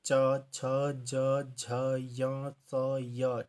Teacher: जितने वर्ण है वो हमारे कंठ व्यंजन होते हैं तालवी व्यंजन जिन व्यंजनों के उच्चारण में जीवा का जो अग्र भाग जो होता है वो कठोर तालू को टच करता है